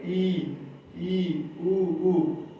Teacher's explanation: इनके उच्चारण में जो हमारा मुख का द्वार है सबसे कम खुला रहेगा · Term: संवृत